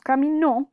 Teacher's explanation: si el acento de la palabra es cambiado a la última sílaba, por ejemplo, si decimos caminó, ya cambiaremos de significado